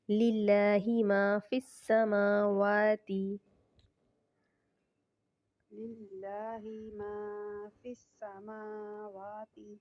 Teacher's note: موٹا پڑھیں گے للہ ما فی السماوات للہ ما فی السماوات واو پڑھتے وقت اپنے لپس کو گول کرنا ہے